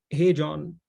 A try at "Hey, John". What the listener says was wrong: No, say it in a way you would call. He's far away. You imagine he's far away.